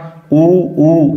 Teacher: उ उ इनका ओट से उच्चारण स्थान है